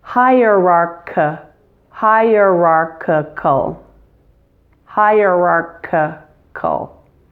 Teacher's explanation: So it's lost its E sound and has become a schwa.